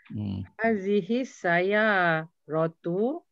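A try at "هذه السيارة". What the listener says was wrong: Nah, bukan dia tak tersambung ni. Dia tak ada al. Bukannya sambung dengan al.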